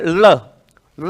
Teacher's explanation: है ल होता है और जब हम बोलते हैं ल ला बोलने में जो जीवा होती है ऐसे घूम के मसूड़े को छूती है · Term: पार्श्विक व्यंजन